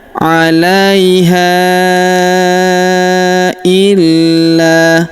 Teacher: Huruf la kita tahan dan tekan karena terdapat tanda tasydid di atasnya. Lalu kita panjangkan 2 harokat karena alif di depannya ya.